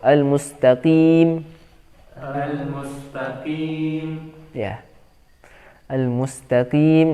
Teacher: Nah, kemudian jangan ada pantulan, ya. Karena qaf di sini meskipun punya sifat pantulan, tapi itu hanya ketika sukun. Di sini berharokat. Jadi bukan qim, aqim, seperti qim, seperti sukun.